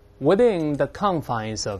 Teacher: 这里▁confines▁重音在前面